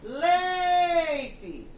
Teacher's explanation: Então, no caso da palavra leite, se eu fosse gritar a palavra leite, eu iria gritar leite. Então, eu demorei mais na primeira sílaba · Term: sílaba tônica